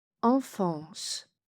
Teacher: Deux fois le son A nasal, EN et AN, se prononcent de la même façon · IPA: /ɑ̃/